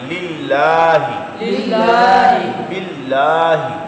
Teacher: اللہ کے لام سے پہلے زیر آ جائے تو اللہ کے لام کو باریک پڑھنا ہے